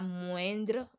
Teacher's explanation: we have the OIN, which is a nasal sound and not a diphthong